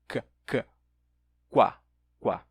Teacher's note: Você aproxima os lábios, só que o bloqueio do ar está lá atrás na língua. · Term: oclusão velar